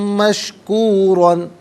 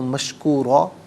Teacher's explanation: را پر 2 زبر کی تنوین، اسے پر کر کے پڑھیں گے۔ وقف کی صورت میں جب الف سے چینج ہوگی تب بھی پر کر کے پڑھا جائے گا۔ کان سعیہم مشکورن، یہاں وقف کریں گے تو مشکورا پڑھا جائے گا۔